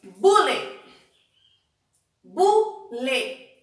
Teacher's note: Eu separei a sílaba e a sílaba mais forte é bu. Não é a última, é a penúltima. Sendo assim, ela é uma paroxítona.